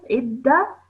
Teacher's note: when you're joining the ayn to the dal, you're doing so with force. Idda, and then you're joining the ta on.